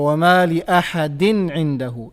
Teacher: There is no gunna because we have the rule of idhar, and idhar requires us to pronounce the tanween clearly without any gunna.